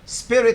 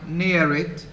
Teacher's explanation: rhyme involves a word that is made up of two syllables the first syllable is stressed and the second is unstressed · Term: feminine rhyme